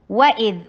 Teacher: वाव होंठों की गोलाई से अदा होता है। फतहा के लिए जबरे को खोलिए।